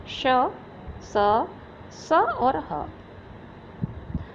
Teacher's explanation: इनके उच्चारण में वायु घर्षण के साथ मुख से बाहर निकलती है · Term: ऊष्म व्यंजन